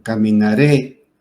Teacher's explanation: la fuerza de la voz recae en la última sílaba, termina en E, entonces la acentuamos. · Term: aguda